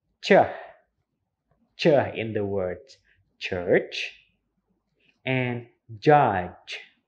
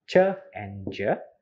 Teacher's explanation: Affricate manner of articulation means that it starts with plosive, like there is a tiny explosions, but ends with vicative, like there is a hissing sounds as well, like the sound of ch in the word church, and judge in the sounds of j, like ch and j are in affricate manner of articulations. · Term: affricate sounds